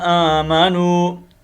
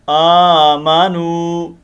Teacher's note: کھڑی زبر ہے، اس کو ایک الف کے مطابق ہم لمبا کریں گے. آمنوا، یہ واو مدہ ہے.